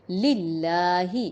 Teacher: زبر یا پیش ہوتی تو ہم پر پڑھتے، زیر کی وجہ سے باریک پڑھیں گے